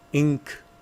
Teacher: Before the C, there has to be the nasalization which is close enough to the C so that you can make the sound. That's the N.